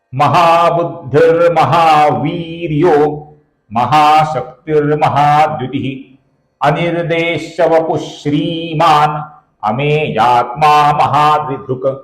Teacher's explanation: श्री दीर्घ है और द्रि ह्रस्व है · वी दीर्घ है, शक्ति ह्रस्व है, द्युति ह्रस्व है